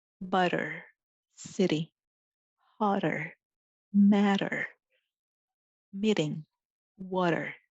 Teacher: quickly to the roof of your mouth this is your TDN making a light and quick D sound it is also much closer to the sound of R in the Japanese syllables